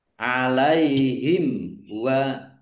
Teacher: mim sukun bertemu dengan huruf waw bacaan izhar safawi dibaca jelas.